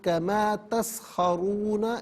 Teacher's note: را پر پیش را کو پر کر کے پڑھیں گے، کما تسخرون، یہاں وقف کریں گے تو کما تسخرون پڑھا جائے گا۔